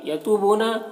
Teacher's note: تو اور بو دونوں میں واو مدہ ہے، دونوں کو ایک الف کے برابر کھینچیں گے